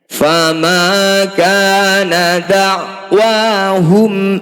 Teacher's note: Fama kana da'wahum mim sukun bertemu selain mim dan ba disebut bacaan izhar syafawi. Mim sukun dibaca jelas, tidak usah dengung.